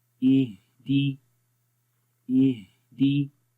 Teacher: हा में देखें आवाज़ की सांस कैसे जारी हो रहा है, और कमज़ोरी भी होती है